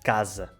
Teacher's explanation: com o som Z, que é esse S, mas com vibração das cordas vocais, não é? Z, o som da letra Z em português, quando vem entre duas vogais. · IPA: /z/